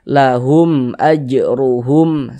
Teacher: Tapi kalau ada mim sukun tidak bertemu dengan huruf ba, tidak bertemu dengan huruf mim, maka hukumnya adalah izhar syafawi. Karena dia izhar, maka dibaca jelas, tidak berdengung. Baca pendek saja.